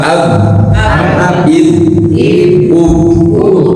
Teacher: jadi tidak mungkin dia mengalir ab enggak bisa dia pasti mati ya